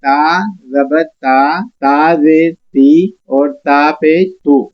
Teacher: اس group کا دوسرا حرف ہے تا، یہ باریک پڑے جانے والا حرف ہے، تو یہاں ہم نے صرف زبان کی نوک کو اوپر کے دانتوں کی جڑوں میں لگائیں گے اور نارمل طریقے سے اس کو پڑھیں گے، اس میں کوئی زور نہیں، کوئی آواز کو موٹا نہیں کریں گے۔